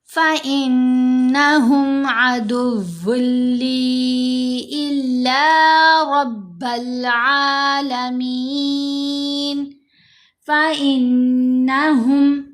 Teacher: نون کے اوپر ہم غنہ کریں گے. کیوں غنہ کریں گے؟ کیونکہ نون کے اوپر تشدید ہے. جب بھی نون کے اوپر تشدید ہوگی یا میم کے اوپر تشدید ہوگی تو ہم نے غنہ کرنا ہے، اور یہ غنہ اصل ہوتا ہے نون مشدد کے اوپر اور جو میم مشدد کے اوپر ہوگا.